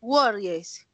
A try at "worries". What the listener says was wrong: Worries, exacto, muy bien.